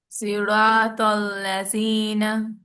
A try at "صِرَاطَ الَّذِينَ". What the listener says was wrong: اور ہیوی کریں. سی. صا. صا. صراط الذین. چلیں یہ کافی بہتر ہے، لیکن آپ کو ہیوی لیٹرز پہ کام کی ضرورت ہے.